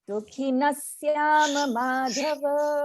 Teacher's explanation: you notice that we did not pronounce the visarga as aha but as sa